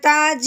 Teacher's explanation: ये देखें, जीम भी हरूफ़े कलकला है, हरूफ़े कलकला के ऊपर जज़म आई है, हरूफ़े कलकला को हमने हिला के पढ़ना है